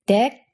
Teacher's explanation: in korean the tongue is a bit further forward you're basically almost touching your front teeth with the tip of your tongue